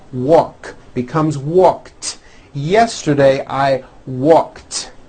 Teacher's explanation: the word walk which has an unvoiced k sound at the end